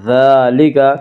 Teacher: ذالک، ذال کے اوپر کھڑا زبر ہے، کھڑا زبر کو 1 الف کے برابر کھینچ کر پڑھیں گے